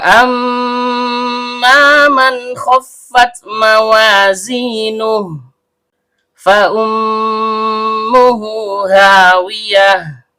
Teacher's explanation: Mim huruf bibir, karena mimnya bertasydid, maka terjadi hukum bacaan gunnah asli. Dibaca dengung dan setiap dengung keluar dari hidung. Kemudian, karena mimnya berharokat fathah, diikuti alif layyinah, maka terjadi hukum bacaan mat tabi'i, panjang 2 harokat dan setiap panjang keluar dari rongga mulut.